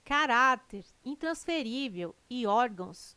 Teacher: caráter intransferível e órgãos tem sua sílaba tônica na penúltima sílaba são paroxítonas